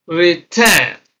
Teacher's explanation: This re being a prefix is not stressed, so stress is on ten, return.